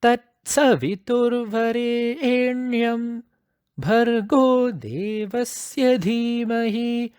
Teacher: the Yam should come in a middle pitch only if the continuation is stopped between Varenyam and Bhargaha, right? So if it is continuous, you bring the Yam in a lower pitch.